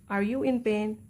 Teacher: My voice is falling and if are you in pain, my voice tone is rising